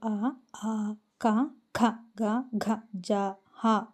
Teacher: కంఠము నుండి పుట్టిన వర్ణములను కంఠ్యములందురు